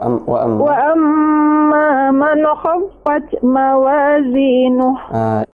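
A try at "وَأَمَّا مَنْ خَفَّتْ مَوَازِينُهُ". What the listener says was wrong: Ada nazlah ya. Man dihilangkan. Man khaffat, bukan man khaffat. Man man ya. Langsung man.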